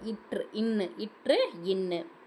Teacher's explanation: மேல்வாய் நாக்கின் நுனி மிகவும் பொருந்துவதால் பிறக்கும் எழுத்து . மேல்வாயோட நாக்கின் நுனி வந்து கரெக்டா இற்று இன்னு இற்று இன்னு சோ